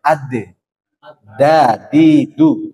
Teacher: di dalam sifat dia tertahan suaranya